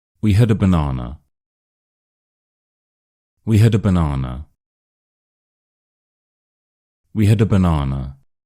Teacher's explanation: Now it's important to note that in a sentence, a is pretty much always going to be that's always going to be a schwa, and banana is an individual word, so that's always going to have two schwas in it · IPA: /ə/